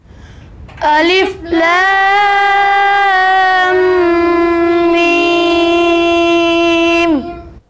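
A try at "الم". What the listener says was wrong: لام میں آپ نے مد کم کی ہے.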